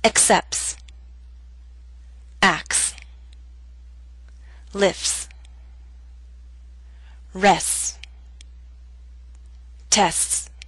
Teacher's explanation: in fast speech we leave out the T sound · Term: omission of t